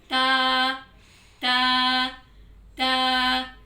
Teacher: जुबान के पार्ट को ऊपर वाले दो दांतों की जड़ से लगाना है, यानी दांतों के पीछे लगाना है।